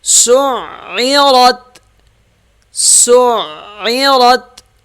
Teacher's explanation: عین سخت ہوگا را موٹا ہوگا تا سے مل جائے گا